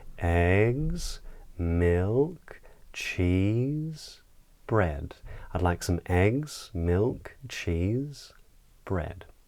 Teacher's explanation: use a downward inflection ‘bread’ to say that we’ve finished the list but on the items before that we would use a rising inflection. So I would say, ‘eggs’, ‘milk’, ‘cheese’, ‘bread’, ‘I’d like some eggs, milk, cheese and bread.’ So on lists and most questions we would use this rising intonation pattern.